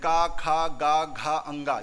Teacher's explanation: ये का वर्ग वाले सभी व्यंजन का खा गा घा अंगा ये कहां से, कंठ से निकलते हैं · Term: कंठ व्यंजन